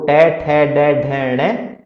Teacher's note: इनका जो उच्चारण स्थान होता है वो मूर्धा होता है